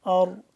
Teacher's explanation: र को मोटा पढ़ेंगे और पीछे जबर भी है